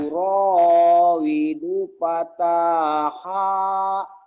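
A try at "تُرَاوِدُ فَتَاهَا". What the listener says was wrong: Du-nya pendek tapi. Ayo lagi. Turawidu fataha.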